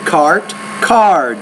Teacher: There's no vibration here, so the vowel which precedes it is shorter. The D is a voice consonant, so the vowel which precedes that sound is longer.